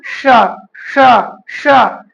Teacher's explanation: श, श, श, तो इसका उच्चारण स्थान है क्या, मूर्धा